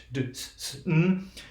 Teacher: Your tongue is pretty much in the same place, right? It's in that alveolar zone.